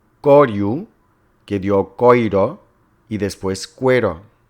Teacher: Las vocales afectadas por el segundo grupo de la cuarta yod fueron O breve tónica que dio oi y después ue